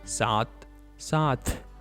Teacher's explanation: with an extra puff of air